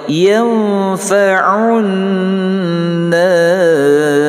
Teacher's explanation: ini nun sukun bertemu dengan fa, hukumnya ikhfa berdengung 2 harakah